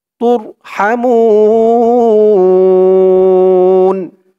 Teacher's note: র ধরবে তুর হা এখানে মধ্যে আরজি তিন আলিফ টান হবে পেশের পরে ওয়াও সাকিন এক আলিফ টানটা তিন আলিফ টান হয়ে যাবে মু বলে বলে তিন আলিফ টান দিয়ে এই নুন কে ধরবে